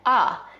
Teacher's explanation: another feature that we see in DC similar to New York is the raised thought cloth vowel